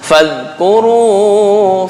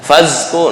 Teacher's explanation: Ujung lidah dengan ujung gigi atas. Ini untuk zal.